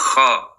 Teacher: kalau mencucu jadinya khu, tapi kha terbuka.